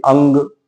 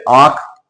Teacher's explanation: करेंगे तो बहुत ज्यादा नाक से वायु निकाली जाएगी अंग लेकिन जब हम शब्द बोले आंख तो इतनी वायु नाक से नहीं निकलती · अंग का जब उच्चारण करेंगे तो बहुत ज्यादा नाक से वायु निकाली जाएगी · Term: अनुनासिक वर्ण, अनुस्वार